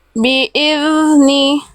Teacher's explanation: Fokus pada zal sukunnya, dialirkan suara tanpa memantul bunyi z di ujung pelafalan az